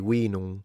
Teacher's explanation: Latin would be vinum, with a long E sound and a nasalized M at the end